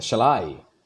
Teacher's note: 5 पैरों को देखिए, शैल और आई, पहले अनस्ट्रेस है, आई पे स्ट्रेस्ड है